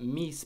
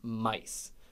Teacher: A lot of ii vowels in the Great Vowel Shift about 500 years ago became ai vowels.